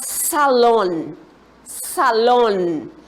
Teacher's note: Nós temos como sílaba forte a sílaba lon